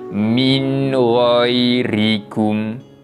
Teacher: nun mati tersebut kita akan bacakan dengan bacaan yang jelas tanpa dengung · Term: izhar kholqi